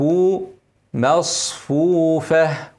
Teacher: نفخم الصاد وبعد كده نرقق الفاء